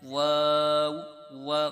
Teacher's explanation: जब वाऊ आप पढ़ने लगेंगे तो वाऊ पर होठ गोल होंगे। जब आप अलिफ पर आपकी आवाज आएगी तो आपके होंठ सीधे हो जाएंगे।